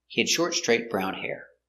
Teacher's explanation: is a positive statement the intonation goes down at the end